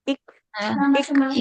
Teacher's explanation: Nah, ada percikan nafasnya.